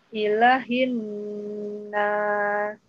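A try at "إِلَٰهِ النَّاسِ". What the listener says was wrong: La-nya panjang, Ibu. Ilahin nas.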